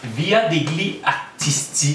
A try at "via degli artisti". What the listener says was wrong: Via des lits artisti. Oui, en italien, tu prononces pas le G devant le L.